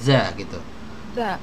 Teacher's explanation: Nah, ujung lidahnya gesek dengan ujung gigi seri atas.